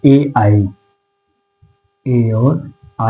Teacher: कंठ तालव्य ये याद रखेंगे कंठ कंठ तालव्य की बात करें तो कंठ यानी कि और तालव्य यानी कि जो का कंठ से और तालव्य ताल से दोनों से निकलने वाला वर्ण है